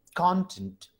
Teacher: तो ये कंटेंट हम जो बोल रहे हैं, तो हमारा जो सिलेबल, जो प्रोमिनेंस है, वो कॉन पे आ रहा है ज्यादा. सो कॉन is spoken at higher, with more prominence, and tent is spoken with low prominence.